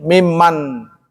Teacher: karena nun mati bertemu dengan mim itu idgham bi gunnah, ya, maka disambung